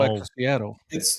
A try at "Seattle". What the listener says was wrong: I feel like you put emphasis on the first name and not the second name. The Seattle.